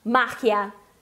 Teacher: E não, a sílaba tônica é no ma.